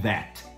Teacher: O TH, por exemplo, de three, você coloca a língua para fora e você sopra, three, você não vibra as cordas vocais. Já o TH de that, você coloca a língua para fora, sopra e vibra as cordas vocais.